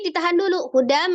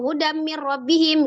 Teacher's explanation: ada tanwin ketemu dengan mim diidamkan dilebur ditasdid ke mim dari Hudan menjadi hudam tapi ditahan dulu hudam jadi jangan langsung hudambihim gitu kan Ya kalau hafalan kadang-kadang